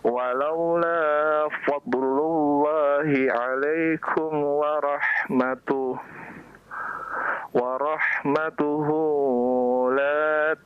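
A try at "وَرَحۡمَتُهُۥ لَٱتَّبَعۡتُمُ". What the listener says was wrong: Nah, kenapa dipanjangkan? Tasdid.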